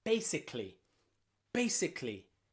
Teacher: the letter A can also sometimes not be pronounced at all. It can be silent. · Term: silent A